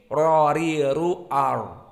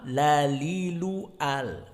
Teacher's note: Qaidahnya di sini ra bertemu dengan lam, maka ra dengan lam sama-sama makhraj atraful lisan. Ra dohirnya sedikit, ra, ri, ru, ar.